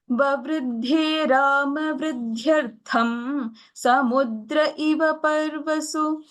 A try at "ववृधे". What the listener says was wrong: ववृद्धे doesn't have the महाप्राणः. It doesn't have the dvitva there. Let's go with the Mahapranaha.